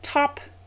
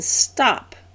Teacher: the T in top, aspirated, and the T in stop, unaspirated